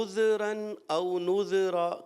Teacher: ذال حرف کلکلا تو ہے نہیں، ہلنا نہیں چاہیے، یہ ہل جاتا ہے تھوڑا سا آپ سے، تو اس کو ہلانا نہیں.